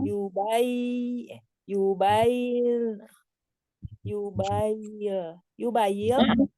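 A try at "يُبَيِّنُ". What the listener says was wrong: Betul, betul.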